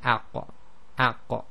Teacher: the back of the tongue is raised, but the front of the tongue is down. So they're heavy in terms of the elevation of the back of the tongue, but it's not full closure of, or near closure of the mouth.